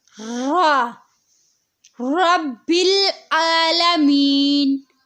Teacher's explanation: را کو ادا کرتے وقت اس بات کا خیال رکھیں کہ اس میں وائبریشن ہوتی ہے